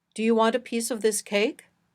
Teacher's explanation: in the first sentence we stress cake it's the last content word and it gives new information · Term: sentence Focus